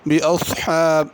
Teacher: بِأَصْحَابِ صاد ہے، اس کو پر کر کے پڑھنا ہے، بِأَصْحَابِ سین کر کے نہیں پڑھنا۔